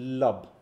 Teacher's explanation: বাই দেখো directing air flow around the slide of the tongue with the tip of the tongue touches the অ্যালভোলার ridge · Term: ল্যাটারাল অ্যাপ্রক্সিমেন্ট